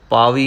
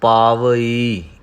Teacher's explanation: ਸੋ ਰਸਨਾ ਪਾਵਈ, ਪਾਵੀ ਨਹੀਂ ਕਹਿਣਾ, ਪਾਵਈ। ਈ ਨੂੰ ਥੋੜ੍ਹਾ ਜਿਹਾ ਵੱਖਰਾ ਕਰਕੇ ਪੜ੍ਹਾਂਗੇ ਤਾਂ ਈੜੀ ਬਿਹਾਰੀ ਦੀ ਜਿਹੜੀ ਧੁਨ ਹੈ, ਆਵਾਜ਼ ਹੈ, ਉਹ ਸਹੀ ਆਵੇਗੀ।